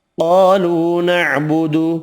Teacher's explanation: قاف حروف مستعلیہ پر پڑھیں گے، الف مدہ واو مدہ 1 الف کی مقدار میں کھینچ کر پڑھیں گے